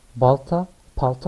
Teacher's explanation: kelime başında Türkçe sözlerde bir BP değişimi var